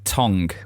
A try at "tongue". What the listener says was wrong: Well, that's not how you say it. Tongue. It's a silent G, you northern monkey.